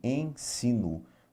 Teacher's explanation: Na palavra ensino, nós vamos ouvir o E nasal, é isso que a gente vai ouvir, ensino.